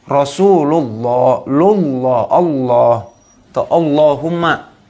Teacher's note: Huruf lam yang ada dalam lafadz Allah kalau lam tebal nih. Kemudian didahului oleh fathah atau dhammah. Cara bacanya gimana? Harus tebal.